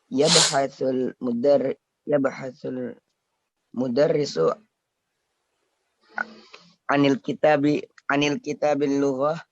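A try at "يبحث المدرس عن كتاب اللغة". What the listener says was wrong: Mana alif lamnya? Enggak ada alif lamnya, Pak. Kitab. Itu salah harokat. Itu harusnya sukun. Enggak diharokatin. Kenapa? Karena tidak ada alif lam. Yabhathu al-mudarrisu an kitabil lughati.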